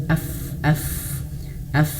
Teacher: Dan ingat huruf fa itu dia berada di sini. Fa bibir bawah nyentuh gigi seri atas.